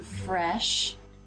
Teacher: the tip of the tongue is lightly touching behind the bottom front teeth, and the tongue is raised a bit in the front mid to make this vowel sound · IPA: /e/